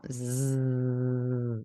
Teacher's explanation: La lengua está en la entrada de los dientes y hacen zzzz, deja pasar